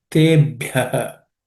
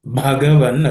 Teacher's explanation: bha has to be aspirated